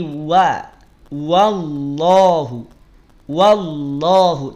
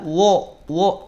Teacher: a ingat-ingat ingat saat ada huruf tipis kemudian dia berharakat fathah maka bunyi vokalnya bunyi vokal a bukan bunyi vokal O